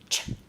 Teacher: ch is actually made up of a t and then a sh. So it's actually got 2 sounds wrapped into one.